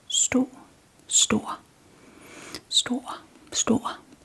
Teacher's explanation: But when placing the R at the end of the word, it comes it becomes store. So we kind of prolong the vowel and change the sound of the vowel in front of it a little bit.